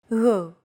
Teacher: It's like a very soft, continuous, and loosely held G, almost as if you're gargling, but don't make it sound too throaty.